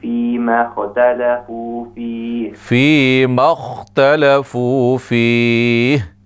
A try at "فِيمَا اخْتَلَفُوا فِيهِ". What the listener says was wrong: قلقلہ نہیں ہے یہاں پہ.